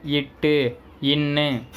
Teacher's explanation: நாவின் நுனி அன்னத்தின் நுனி பொருந்துவதால் பிறக்கும் எழுத்துக்கள்